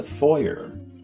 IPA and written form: ˈfɔɪ ər (foyer)